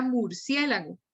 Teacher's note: ya sabemos que la sílaba tónica va sobre la e